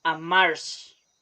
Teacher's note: Instead of R, they change it for a kind of SH pronunciation, like when you say wish, amarse. So you know it's the same R.